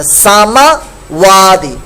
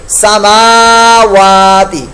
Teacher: میم کے اوپر زبر پڑھ دی، کھڑے زبر کو زبر کے اندر تبدیل کر دیا، تو یہ غلط ہو جائے گا، لہذا درست کیجئے سماوات.